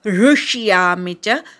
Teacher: ऋ बरोबर पोट फोड्या अर्धा श ऐकू येऊ दे